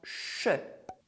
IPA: ʃ